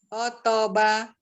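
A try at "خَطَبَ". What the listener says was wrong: Khotoba. Khotoba. Ya, tebalkan khoto, tebal. Satu harokat, mulutnya tetap terbuka.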